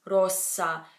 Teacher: get AZ sound and will you get two S's you get the sound which is still longer than our s is in English